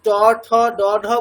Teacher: যদি ট ঠ ড ঢ বলতে বলা হয়, জিভটা হচ্ছে আমাদের উপরের যে প্লেট আছে সেই উপরের প্লেটের পিছন দিকে টাচ করছে